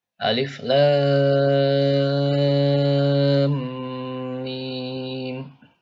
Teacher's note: La-nya itu, ya, 6 harokat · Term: mad lazim